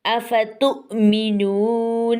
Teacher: تا پیش کے بعد جو ہے حمزہ ساکن آ گیا تو حمزہ کو جھٹکے سے پڑھنا ہے ، حمزہ کو ہم جھٹکے سے پڑھیں گے جیسا کہ افتؤمنون،